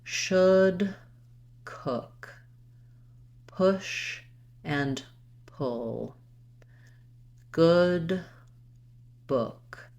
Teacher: So to make the vowel, you can feel the oo, take that oo from your native language with very pursed lips and high tongue, oo, and then the tongue relaxes, the jaw opens a little bit, the lips are still rounded but not as tightly pursed, and you get the sound. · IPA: ʊ